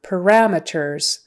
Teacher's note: syllable stress is on the second one parameters and so meters not meters we wouldn't say parameters it's